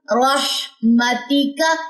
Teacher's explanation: ہاں میں ویسے حمز کی صفت ہوتی ہے اور جزم کے ساتھ یہ زیادہ پرومیننٹ ہو جاتی ہے، یعنی کہ سانس آپ کا جاری ہوگا